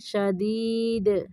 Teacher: دال کو کلکلا کرنا ہے